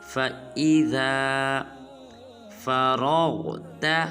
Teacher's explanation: اس کے بعد آیت نمبر 7 ہے ہمارے آج کے لیسن کی، وہ ہے فَإِذَا، بعض مسلمان پڑھ دیتے ہیں فَإِذَا، یہ بالکل غلط ہے، نہ فا کو لمبا کرنا ہے نہ حمزہ کو لمبا کرنا ہے بلکہ ذال کو لمبا کریں گے